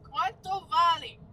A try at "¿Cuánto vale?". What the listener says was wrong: At the end, you're like putting a Y and it's a E. ¿Cuánto vale?